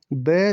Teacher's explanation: ब संगोष्ठ है, बिल्कुल सही है, संगोष्ठ है, क्योंकि संगोष्ठ में 3, 4, 5 तो प फ ब 3 पे आता है, तो संगोष्ठ तो है। ओष्ठे भी है, महाप्राण नहीं है, क्योंकि महाप्राण में दूसरा और चौथा वर्ण होता है जबकि ब तीसरा वर्ण है।